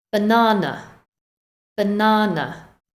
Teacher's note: we stress syllable number two so the first and third ones are weak with the uh